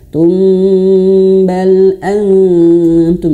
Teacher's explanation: Kalau disambung ke sini maka ditahan tum. Mimnya ditahan tumbal. Nah tahan sampai dua harakat.